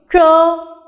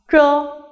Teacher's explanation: In the unaspirated initials mentioned just now, while pronouncing ch, which is written as zh, the tip of the tongue is turned up against the hard palate, and then the air is let out from the passage in between the tongue and the hard palate.